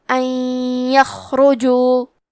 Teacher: یا میں ملا کے غنہ اور تشدید کے ساتھ یہ حکم کو ادا کریں گے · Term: ادغام